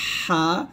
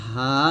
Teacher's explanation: এই হরফটা হলকের মাঝখান থেকে চাপ দিয়ে বলতে হবে হা, আর এই হরফটা হলকের শুরু থেকে বলতে হবে হা, নর্মাল ভাবে। তাহলে এটা হবে হা দুই জবর হান, আর এটা হবে স্বাভাবিকভাবে হবে হা দুই জবর হান, হান, এরকম।